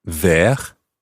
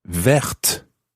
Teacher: And this time it's spelled V-E-R-T-E. So the E at the end makes the T sound. The T is no longer silent.